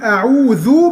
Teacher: قل أعوذ، تخلي بال حضرتك لو وقفت طبعا هتقول أعوذ تسكن الذال، لكن انت لما توصلها يبقى بتقول أعوذ بتضم حرف الذال وبتخرج طرف لسانك فيها. بربي لو وقفت هتقول برب، هتبقى اسمها قلقلة.